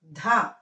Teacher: ధ అనేది మహాప్రాణాక్షరాలని గాలి వదులుతూ పలకాలి. సామాన్యంగా పలకూడదు.